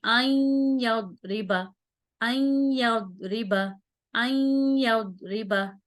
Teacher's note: या को मिलाएंगे अलिफ के साथ और गुन्ना करेंगे। ठीक है, ये तो हो गया इदगाम मा गुन्ना।